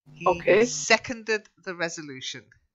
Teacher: Seconded the stress is on the first syllable.